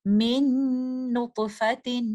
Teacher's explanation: اور لیٹر نون یرملون لیٹر میں سے ایک لیٹر ہے، تو ہم اس ساکن نون کو بعد میں آنے والے متحرک لیٹر نون کے اندر کمپلیٹلی مرج کر دیتے ہیں